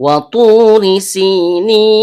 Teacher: Karena ro-nya berharokat kasroh, maka hukum bacaannya tipis atau tarkik.